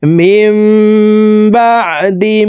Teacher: নুন সাকিনের পর একলাফের হরফ বা আসছে এই কারণে এই ছোট্ট মিম দ্বারা পরিবর্তন করিয়া গুন্নার সহিত পড়তে হবে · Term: ইকলাব গুন্না